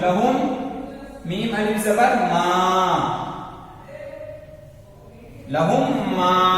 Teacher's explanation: इदगाम शफवी किसे बोलते हैं? मीम साकिन है, मीम साकिन के बाद मीम आए तो मीम को मीम से मिलाकर गुन्ना के साथ पढ़ेंगे।